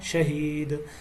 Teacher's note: دال کے اوپر قلقلہ ہے